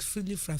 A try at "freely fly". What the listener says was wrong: Mommy is saying fry. Fry. You are saying fry. It's fly. fly.